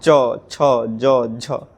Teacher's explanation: स्पर्श करके, एक तरह से घर्षण करके, फ्रिक्शन करके इन व्यंजन वर्णों का उच्चारण होता है, इसलिए इसको स्पर्श संघर्षी कहते हैं।